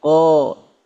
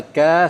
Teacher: lidahnya menegang kalau Kaf lidahnya rileks ka kalau huruf-huruf istifal suara itu mengalir langsung ke bawah ka